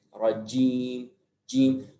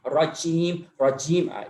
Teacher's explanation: Karena jim mempunyai sifat syiddah, ditahan dia dikit.